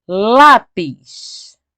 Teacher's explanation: é o lá, a sílaba mais forte, e é a penúltima sílaba mais forte. Então é uma paroxítona.